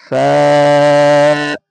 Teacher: নিচের ঠোঁটের ভেজা অংশ এবং সামনের ওপরের দুই দাঁতের আগার সাথে লাগিয়ে উচ্চারিত হয় ফা